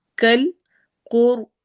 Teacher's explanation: ہے تو ہم اس کو علی پراپر پڑھیں گے، کل قر، قاف کو بھی اور وا کو بھی دونوں کو ہم نے ہیوی موٹا کرتے ہوئے پڑھنا ہے